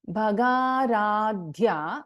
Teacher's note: Bha is a Mahaprana, Dha is a Mahaprana Akshara.